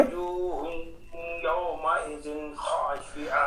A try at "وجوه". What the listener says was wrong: وجو نہیں پڑھنا، وجو، وجوہ، وجو،